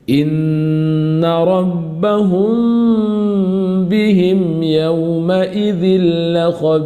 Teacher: ikhfa syafawi di mana bibir dikatupkan dengan ringan-ringan saja tanpa ditekan yang berlebihan